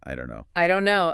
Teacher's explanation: the T is gone, the vowel is different.